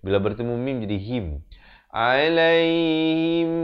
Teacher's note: Him bukan him. Ha baris kasrah bunyi hi. Bukan bunyi he.